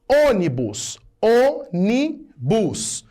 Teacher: É a antepenúltima sílaba que é a tônica. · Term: proparoxítona